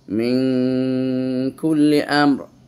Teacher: নুন সাকিনের পর কাফ এসেছে কাফ হলে ইকফার হরফ এজন্য এখানে আমরা গুন্না করতেছি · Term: ইখফা